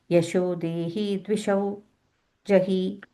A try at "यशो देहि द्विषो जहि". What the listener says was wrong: That Yasho Dehi, you're stretching the he a little bit there. So Yasho Dehi Dvisho Jahi.